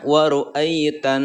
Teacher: Dibacanya ai lembut, tetapi membaca lembutnya itu pendek ya, tidak dipanjangkan. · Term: huruf lin